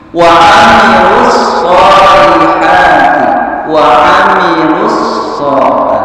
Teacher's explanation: Tapi di sini wa amilus shol, sedangkan alif lamnya ada sama dengan wal asli ya. Karena kedepannya ada huruf yang pakai tasdid ya, maka alif lamnya seolah hilang, tidak dibaca ya. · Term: alif lam samsiah